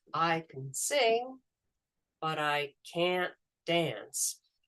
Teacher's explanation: the way a t and a D in English sort of merge together and that the the vowel sound in can is dropped into